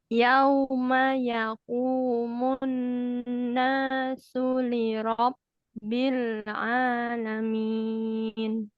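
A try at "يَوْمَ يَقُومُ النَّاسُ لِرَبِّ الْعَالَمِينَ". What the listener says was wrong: Nah, masih tipis ya, masih liro, ro, bukan ro, ro, ro, arro, ro.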